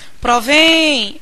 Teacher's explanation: Olha que sílaba tônica é a sílaba mais longa, é provém, essa sílaba final que se prolonga durante mais tempo. E ela termina com em.